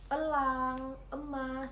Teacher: Kemudian yaitu vokal E madia tengah dengan posisi mulut semi tertutup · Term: vokal E madiyah tengah